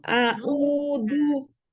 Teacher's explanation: huruf zal ujung lidahnya ini ada di ujung gigi seri bagian atas